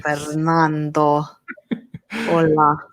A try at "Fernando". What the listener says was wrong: Say it with your accent. You need to roll your R's.